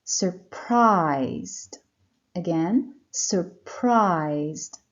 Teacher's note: The stress is on the second syllable, prized.